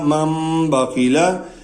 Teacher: جب نون ساکن کے آگے با آ جائے گی تو یہ وہاں پہ ہم میم پڑھیں گے